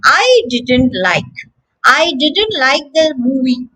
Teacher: Notice that the T has become silent.